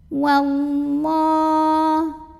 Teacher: Lam jalalah dibunyikan secara tafkhim karena huruf sebelumnya yang waw berbaris fathah. Maka dibacanya tebal, pangkal lidah dinaikkan. Wallah. Kemudian alif lamnya namanya alif lam syamsiyah.